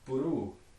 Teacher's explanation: So for instance, words like blue that start with two consonants, again, a vowel gets added to break up those two consonants in Maori, and instead you wind up with puru.